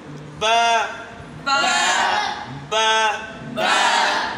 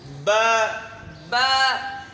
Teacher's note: अपनी जगह पर होंठों को रख के जैसे है मुंह बंद करके रखेंगे और इसको थोड़ा सा ज़ोर देना है।